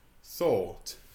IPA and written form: θɔːt (thought)